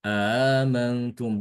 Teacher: Menambahkan hamzah, ya. Kemudian hamzah yang keduanya ditasilkan.